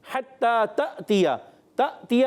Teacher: تأتیہ میں جھٹکا دیں گے کیونکہ تا کے بعد جو الف آیا ہے، یعنی الف نہیں حمزہ ہے. جس الف پر زبر زیر پیش آ جائے اس کو الف نہیں حمزہ کہتے ہیں، یا اس پر چھوٹی سی جزم آ جائے تو چھوٹی جزم ہوتی ہے دال، تو یہ آ جائے تو اس کو الف نہیں کہتے، اس کو حمزہ کہتے ہیں اور جھٹکے سے پڑھتے ہیں.